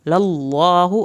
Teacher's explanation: اللہ کے نام کو پر کرنا ہے، منہ بھر کے پڑھیں گے تو اللہ کا نام صحیح پر پڑھا جائے گا.